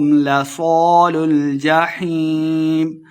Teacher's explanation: لصا الف مدہ 2 حرکات لمبا کرنا ہے اور صاد کو موٹا کر کے پڑھیں گے،